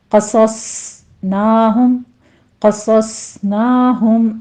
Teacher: صاد دونوں جگہوں پہ پر پڑھا جائے گا، صاد کو آپ نے جنبش نہیں دینی ہے، حرکت نہیں دینی، اس کو آپ نے سٹاپ کرنا ہے سیٹی کی آواز کے ساتھ، اس کو پر پڑھنا ہے۔